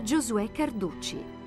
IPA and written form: dʒozuˈɛ karˈduttʃi (Giosuè Carducci)